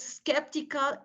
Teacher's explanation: the stress is in the first syllable